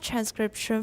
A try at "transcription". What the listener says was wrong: Oh, there's an N. Transcription.